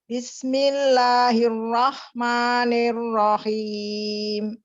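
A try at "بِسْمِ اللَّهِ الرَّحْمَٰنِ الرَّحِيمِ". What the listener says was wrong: Mirrahim. Ulang. Mirrahim. Jangan mirroh.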